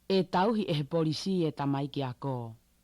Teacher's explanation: the difficult thing with the Tongan T is like you can hear she says it really strongly, but it's still not aspirated at all